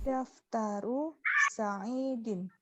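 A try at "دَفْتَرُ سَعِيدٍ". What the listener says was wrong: Daftaru Sa'idin, sahih.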